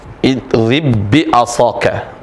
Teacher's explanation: Jadi dibacanya ba yang kedua saja menjadi bertasdid. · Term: al-mislan